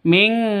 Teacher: Non mati bertemu dengan qaf. Ya, samar didengungkan, siap-siap ke huruf qafnya ditambah ng. Ming, seperti itu bacanya ya.